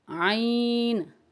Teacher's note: عین حلق کے اندر سے نکلے گی اس کی آواز، تو اسے باریک کرنا ہوگا، یہ باریک حروف میں شامل ہوتی ہے۔